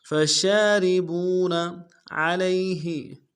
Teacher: عین کو موٹا کریں گے، لام کو یا کے ساتھ ملانا ہے، یا لین بغیر کھینچے پڑیں گے